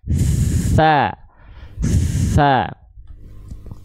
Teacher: kalau t tenggorokannya enggak getar tapi nafasnya keluar